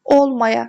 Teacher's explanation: Olmaya sözündə vurğu birinci hecaya düşür.